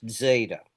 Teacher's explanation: Don't don't pronounce it like a Z. You'll pronounce it like a DZ almost or D S.